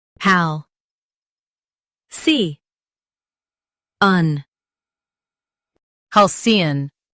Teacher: Stress Hal and keep C un soft.